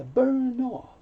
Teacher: the end moves over so you'll hear burn off